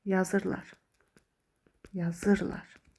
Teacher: vurğu ır hecasının üzərinə düşəcəkdir.